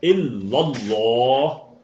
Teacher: ایک چھوٹی سی بات میں یہاں دہرا دوں، کل ہم نے بات کی تھی کہ اللہ جب لکھا آئے اس سے پچھلے حرف پہ اگر زبر ہوگا تو آپ نے کیا کرنا ہے؟ اس آواز کو تھوڑا بھر کے پر کر کے بھاری کر کے ادا کرنا ہے